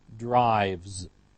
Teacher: the base form ends with the sound v, which is voiced. So we have a voiced ending, z, drives.